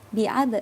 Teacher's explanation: Dan ini asra bi abdihi. Nah, di sini ada qalqalah sugro. Dipantulkan namun pantulannya kecil ya.